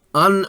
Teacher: نون مشدد کو غنہ سے پڑھا جاتا ہے، ناک کا بانسا 2 حرکات زبان تالو سے چپکا کر اور ہونٹ کھول کر